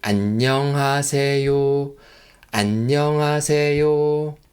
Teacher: The first syllable an should be the lowest pitch. If the pitch of an is do, re, mi, fa, sol, others are like mi or fa. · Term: intonation